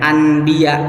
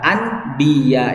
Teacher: Coba kita lihat kalau bacanya anbiya itu agak enggak enak karena agak jauh dari an ya kan, lidah masih ada di atas kemudian mau ke ba itu ada di bibir